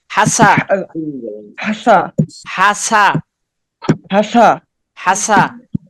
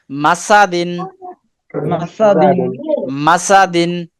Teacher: সিনটা একটু আর একটু সিটি করেন